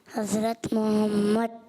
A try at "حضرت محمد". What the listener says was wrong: ابھی بھی ہاں آ نہیں رہی۔ صلی اللہ علیہ وآلہ وسلم۔ درود بھی پڑھنا چاہیے۔ جواب آپ کا کیا ہوا پتہ ہے؟